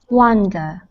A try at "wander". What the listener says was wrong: It's actually wander, not wonder.